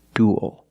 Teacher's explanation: it ends with a dark L, because the L is after a vowel at the end of a word.